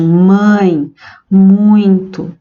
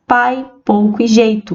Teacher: os ditongos decrescentes os ditongos eles podem ser orais ou nasais os nasais são pronunciadas de forma mais anasalada